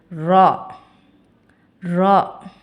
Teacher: நுனி நாவின் பின்பகுதி மேல் வரிசை நடுப்பற்களின் ஈரை தொடும்பொழுது அழுத்தமாக ஒலிக்கப் பெறுகிறது